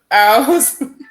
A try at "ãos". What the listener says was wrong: Não é aos. Ãos. Nariz. Ãos.